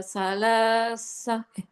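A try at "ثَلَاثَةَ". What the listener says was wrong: Jangan salasa. Ya, sama jangan sa. Keluar lidah.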